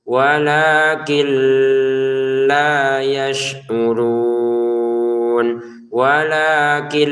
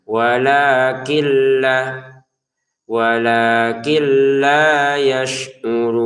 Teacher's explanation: Jangan dibaca walakin la memasukkan nunnya ke lam sehingga nun sukunnya sudah tidak terbaca jelas · Kalau huruf setelahnya lam seperti ini, maka dimasukkan dan tidak usah didengungkan, ya. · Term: tanpa dengungan, masukin dengan tanpa dengungan